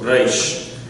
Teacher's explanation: In Hebrew, there's a trill on the tongue, but it's from the back of the throat. And so it's almost like you're swallowing the letter. · It's almost like a G sound. So it's a reish from the back of the throat.